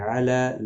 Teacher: لام کے اوپر کھڑی زبر ہے، ایک الف کی مقدار کے برابر کھینچ کر پڑھیں گے